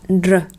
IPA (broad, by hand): ʀ